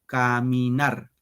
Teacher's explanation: caminar, 3 sílabas. En la tercera sílaba va el acento